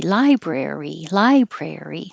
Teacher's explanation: three syllables stress on the first syllable so it's one two three library library lie is longer brare